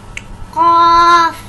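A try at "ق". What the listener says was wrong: इसे थोड़ा लंबा करना है।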